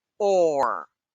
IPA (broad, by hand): ɔːr